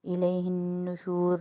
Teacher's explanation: الیہ النشور نون پہ مشدد ہے، نون مشدد تشدید آ رہی ہے، نون مشدد کو 1 الف کی مقدار غنہ کریں گے